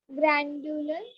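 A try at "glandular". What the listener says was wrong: ग्लैंडुलर. They are not grand, they are glands.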